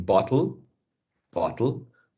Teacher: the t sound becomes a glottal t before a weak syllable